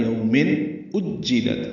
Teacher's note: تنوین کے بعد حمزہ آنے کی وجہ سے اظہار ہے